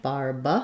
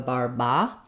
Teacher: Barbacoa so we would have just that back pulled back R we would change this second a to a schwa sound